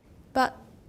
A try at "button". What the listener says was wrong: But you're moving your tongue. Leave your tongue up there. Button. You're going but. It's not but. It's but. Okay, leave your tongue. Don't let your tongue move. Button. 舌尖要顶上去，不要动。